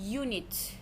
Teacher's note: Y səsi birinci gəldi. Düzdür. Baxmayaraq ki, burda u hərfini yazıblar. Düzdür. Axı əlifbada bunun səslənməsi hərfi kimi gedir.